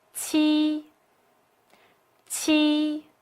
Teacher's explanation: So, ji is unaspirated, while qi is aspirated. A strong release of breath is made when qi is articulated.